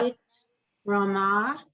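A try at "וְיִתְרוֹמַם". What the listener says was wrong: Vayit. Not eat. You must hear the yud. y, like a y, a y.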